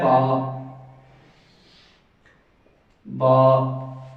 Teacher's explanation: دوسرے نمبر پہ ہے با با، یہ با کا مخرج، تو یہ با کا مخرج انتہائی آسان ہے۔ یہ دونوں ہونٹوں کو جب ملائیں گے تو اس سے با ادا ہوگا